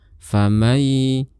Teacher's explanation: sukun ada huruf mim sama kita ingin mengindukkan Nun ke dalamnya maka nun-nya jangan kita lafalkan jadi dari mim langsung ke ya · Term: Idgham Bighunnah